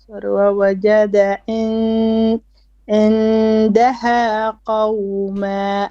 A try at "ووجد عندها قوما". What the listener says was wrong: Okay, you have an issue with your ayn.